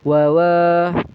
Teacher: Jadi kita bacanya wawa hanya cukup dua ketukan. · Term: mad thobi'i alif